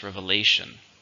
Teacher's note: Stress on the third.